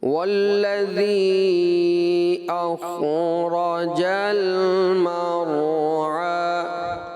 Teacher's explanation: خا ساکن تھا، لام ساکن تھا، اس میں ایسا لگا کہ آپ کی آواز ناک میں چلی گئی۔